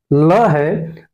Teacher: जो ल है इसको कहेंगे हम लोग पार्श्विक व्यंजन